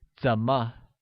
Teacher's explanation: is pronounced with the falling rising tone